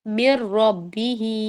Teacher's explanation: نون drop کر دیں گے اور آواز بالکل نون کی نہیں آئے گی، صرف را کی آواز آئے گی